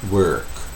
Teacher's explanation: Isso é uma vogal. Isso é a vogal como se usasse apenas o r como vogal.